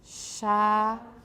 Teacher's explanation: Start with a palato-alveolar fricative with the blade of the tongue. Make sure you're not doing it with the tip of your tongue.